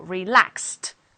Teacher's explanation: at the Ed ending for adjectives then we have relaxed because relax ends in s so relaxed with a t